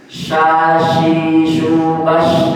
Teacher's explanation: Shin itu di tengah, bukan di ujung.